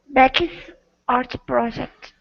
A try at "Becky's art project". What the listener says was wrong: Okay, so right now what you're saying is Becky's. the E is not coming out. It's Becky's.